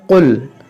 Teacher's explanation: बाद लोग यहाँ पर गलती करते हैं, छोटे काफ से पढ़ते हैं, डंडे वाले काफ से, इसको पढ़ते हैं कुल। देखें आप बड़े काफ से ही इसको पढ़ें, अगर आप छोटे काफ से पढ़ेंगे तो ये माना बदल जाएगा